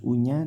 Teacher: penjelasannya yaitu nah ini hati-hati pembacaan Au tidak tidak terdengar Au tidak miring di o tapi u yang bagus